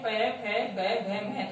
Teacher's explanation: प वर्ग में जो 5 वर्ण होते हैं, प, फ, ब, भ, म, तब हमारे जो दोनों जो होठ हैं ये आपस में मिलते हैं, स्पर्श करते हैं। इसलिए इन वर्णों को हम ओष्ठ्य वर्ण कहते हैं।